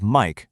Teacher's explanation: Mike with a high tone, where your pitch just stays high